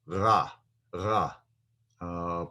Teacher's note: Like one of the main unique qualities of the Hebrew language is that the R sound in Hebrew, the resh, remember that's pronounced in the back of our throat. So when we say the R sound in Hebrew, it's ra, ra, pronouncing that from the back of our nose.